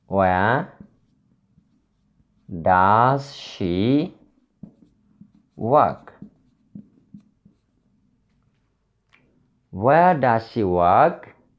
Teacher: At the end of the word, the voice falls. The end of the word, the voice falls. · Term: falling intonation